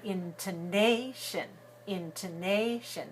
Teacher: the third syllable is stressed and two of the syllables are very short and weak and their sound it doesn't really matter it's very short the